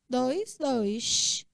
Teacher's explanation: Mas o carioca, quem mora em Belém do Pará, no Recife, vai pronunciar dois. Ele vai chiar esse S aí bacana. Dois, dois.